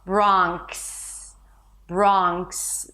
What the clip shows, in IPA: brɑːŋks